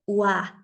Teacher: cada vez que yo quiera pronunciar la doble u con la a será como ua nunca como gua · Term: sonido de la wu